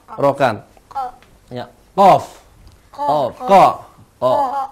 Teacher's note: perhatikan huruf qof ada di pangkal tenggorokan ini.